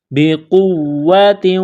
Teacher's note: نقطہ والا قاف ہے، اس کو موٹا کرنا ہے،